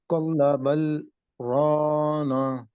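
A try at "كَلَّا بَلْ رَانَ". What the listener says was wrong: نون دراز نون دراز ہو گیا. نون دراز نہیں کرنا. کل بل رانا.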